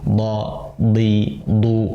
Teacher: dho itu harus tebal dalam kondisi fathah, dhommah, kasrah, sukun.